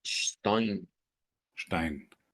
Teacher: debemos tomar en cuenta que no es una s sino que es una sh la del principio